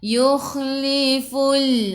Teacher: Khiyakhu biar ada angin biar mengelegak